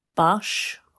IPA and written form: bʌʃ (bush)